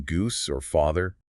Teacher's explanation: back vowels in a language, those ooh and ah sounds like in goose or father